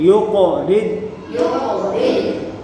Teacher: قاف حرف مستعلیہ ہے اور حرف قلقلہ بھی ہے، تو یہاں قلقلہ کریں گے